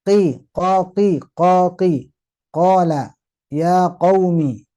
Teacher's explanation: qo pangkal lidah ee diangkat tapi jangan sampai e nyerempet ke tenggorokan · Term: Huruf qof